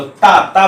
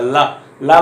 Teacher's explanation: और उसी के साथ ला, ला का भी दंत है, तो ता ता बोलिए तो देखिए दांत में, ऊपर के दांत में अच्छी तरह से हमारी जिह्वा स्पर्श करती है, पर ला ला बोलेंगे तो हल्का करती है।